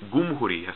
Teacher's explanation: A common example is the word for a republic in Arabic is jumhuriya, but in Egypt they say gumhuriya. So it's more like the letter G, g.